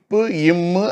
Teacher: மேல் உதடும் கீழ் உதடும் உற தமக்குள் பொருந்த பா மா பிறக்கும். இப்பு இம்மு ஆகிய 2 மெய்யெழுத்து ஒலிகளும் பிறக்கும்.